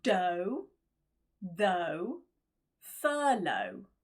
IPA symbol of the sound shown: əʊ